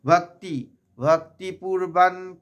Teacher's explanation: অনুস্বরটা দন্ত ন এর মত উচ্চারণ হবে